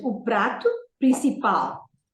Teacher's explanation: The word principal is emphasized on the last syllable because it ends with an L. If you remember, the words ending with L, R, Z are stressed, are emphasized on the last syllable.